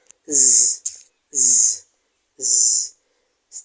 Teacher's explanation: observe the vibrating nature of the sound